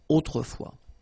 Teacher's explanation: final S not pronounced